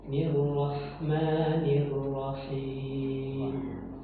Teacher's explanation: jangan terkesan h-nya itu bertasydid